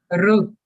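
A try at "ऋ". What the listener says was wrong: That is the re, not ru. So this is re. It is that re.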